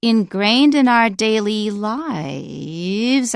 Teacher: You go high, you go low, and rise a little bit. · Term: continuation rise